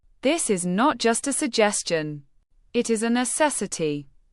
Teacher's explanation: Notice how I hit the words not and necessity. That is how you signal importance. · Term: word stress